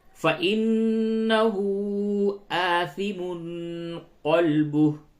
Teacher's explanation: نون مشدد ہے، اس جگہ پہ غنہ کیجئے اور ہا کے اوپر آپ مد کیجئے